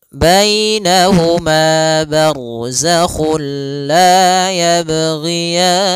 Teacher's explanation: Pada lafal bainahuma di sini ada ya sukun, didahului dengan fathah. Ini bacaan lin lagi, lembut dalam pelafalannya.